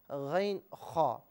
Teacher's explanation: اب یہاں پر آپ حلق کو 3 پورشنز میں تقسیم کریں تو حلق کا جو اوپری حصہ ہے یہ غین اور خا کا مخرج ہے